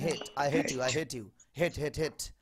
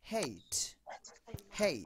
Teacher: এটা মাঝখানে ই দিলেই সঠিক